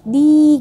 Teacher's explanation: Di itu disebut dengan mad tabi'i, harus dibaca 2 harakat atau 1 alif.